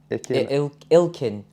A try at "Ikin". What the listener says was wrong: it's not got an L in it. Ikin or Ikin.